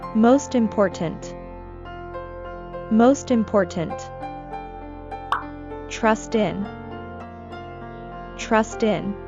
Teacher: the t is between a consonant and a vowel so it's still pronounced